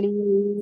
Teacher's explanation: मुंह के अंदर के खाली हिस्से से अदा होता है अलीफ, है ना। लेकिन इसको याद तो आपको करना ही पड़ेगा ना, मुंह के अंदर के खाली हिस्से से अलीफ अदा होता है।